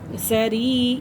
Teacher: یا مدہ ہے اور اسے 1 الف کے برابر کھینچ کے پڑھیں گے